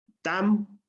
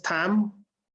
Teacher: Y si decimos tam, que ya va con la T aspirada